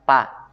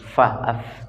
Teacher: Jadi ini ujung gigi seri atas bertemu dengan badan bibir bagian bawah. Fa, bukan pa. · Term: huruf fa